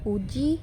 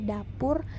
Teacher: terdapat dua alofon juga yakni u tinggi atas belakang bundar dan u tinggi bawah belakang bundar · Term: fonem u